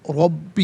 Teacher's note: रब्बी का रॉ पर ज़बर है, रॉ को पुर करके पढ़ेंगे